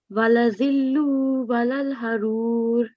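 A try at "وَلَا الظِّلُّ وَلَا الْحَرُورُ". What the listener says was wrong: You still need to have a bit of a connection on these two. Walal harur. So it's a bit of the connections that you need to practice now.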